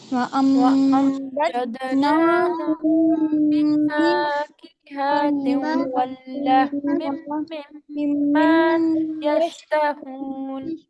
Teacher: یہاں پر اخفاء شفوی، یہاں پر ادغام، تنوین کے بعد واو آ رہا ہے ادغام، پھر یہاں پر میم مشدد کا غنہ